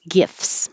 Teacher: you don't have to say the T, just skip the T and make FS, gifts.